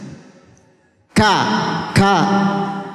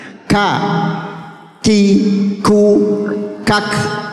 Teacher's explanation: Jadi hames itu mengeluarkan atau keluarnya banyak nafas yang banyak. Jadi kalau membaca ka, jadi bukan ditahan, bukan ka.